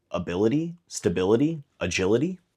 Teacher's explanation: The last stressed vowel is the I of ility, and they all happen to match up